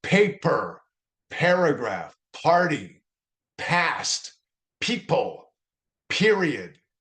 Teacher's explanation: If you put a piece of paper in front of you and just say it, you'll see the paper jump because you blow out a little bit of air when you use the sound